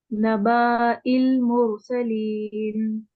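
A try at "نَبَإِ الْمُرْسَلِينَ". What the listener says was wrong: Okay, why you are pulling your ba by the way? نبائل, that's all. نبائی, same count, 1 1 1, that's all. یعنی یہ وہ ہے نا, دیکھیں کیوں, دیکھیں مطلب ہے تو دیکھیں حمزہ اوپر آئے گا تو فتحہ ہے ہمیشہ اس کے اوپر, ٹھیک ہے.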